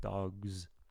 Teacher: we can find the G in the voiced section of voiced consonants. And so we can add a Z to the end.